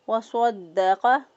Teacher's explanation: وَصَدَّقَ، صاد جو ہے اس کو پر پڑھیں گے. دال کو مضبوطی اور قوت کے ساتھ ادا کیا، اور قوف کو بھی پر پڑھیں گے.